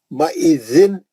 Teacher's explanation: زن میں جو ہے یہ زال زبان لگا کے پڑھے جانے والا ہے